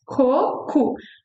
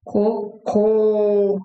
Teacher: the one with the accents that means poop has the last syllable very strong. So it's like ko.